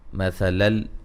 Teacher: نون تنوین کا ادغام بلا غنہ، ذی مدہ، آمنم رأت، را کو موٹا ادا کریں گے، مد اصلی ہے.